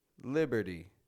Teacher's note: not pronouncing a strong T it's real soft real quick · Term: flap te